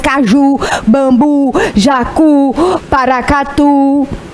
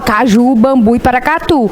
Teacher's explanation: a gente fala com tanta tonicidade esse Ju que a gente fica com vontade de transformar essa tonicidade em